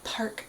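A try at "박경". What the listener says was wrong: Kyung, but it's actually Pak. Pak. There's no R in there. That would be very awkward in Korean. Paruk. Paruk.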